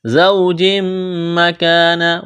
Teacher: أَرَدْتُمُ اسْتِبْدَالَ تا کو با کے ساتھ ملانا ہے، با پر قلقلہ کریں گے، الف مدہ ہے، ایک الف کے برابر کھینچنا ہے۔ زوج مکان واو ساکن سے پہلے زبر ہے، واو لین ہے بغیر کھینچ کے پڑھیں گے